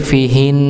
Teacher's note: ketika dia di akhir ketika wakaf maka dia tetap didengungkan tapi tidak dibaca harakatnya